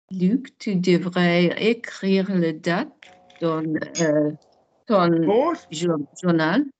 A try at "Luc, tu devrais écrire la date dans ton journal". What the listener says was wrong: Make it longer, not Luc. Luc, make it longer. Longer.